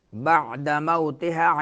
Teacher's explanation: موتها واو ساکن اس سے ما قبل فتحہ ہے تو واولین ہوگا